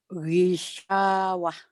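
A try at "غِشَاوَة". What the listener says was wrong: Shinnya jarang keluar juga. Gisyawah. Masih kurang nanti ibu latih ya.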